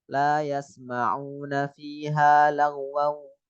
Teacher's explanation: Idgham bi gunnah, tanwin ketemu wawu, ada gunnahnya, suara hidung.